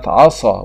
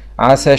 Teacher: فلا يميز الصاد عن السين إلا الاستعلاء والإتباق